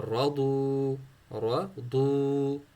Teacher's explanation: را کو موٹا، ضاد کو موٹا، واو کو ساکت پڑھنا ہے